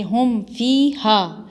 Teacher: मीम पर कोई गुन्ना कोई इख्फा ना करना, सीधा हम पढ़ना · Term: इजहार शफ़ी